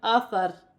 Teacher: وقف کی صورت میں زیر گر جائے گی اور را ساکن ہو جائے گی، را باریک پڑھی جائے گی